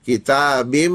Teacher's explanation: व किताबिन मस्तूर लेकिन बिन नून हटा देंगे मीम में जम हो जाएगा